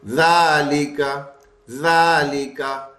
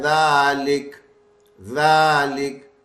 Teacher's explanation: زبر والی جزم سے بدل جائے گی، ساکن ہو جائے گا. تو یہ ذالکا پڑھنے کی بجائے ذالک ذالک یوں پڑھیں گے.